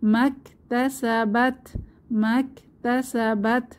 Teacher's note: জবরের বাম পাশে খালি আলিফ মাদের হরফ মাক তাসাবাত মাক তাসাবাত তাতে হামস একটু বাতাস বের হবে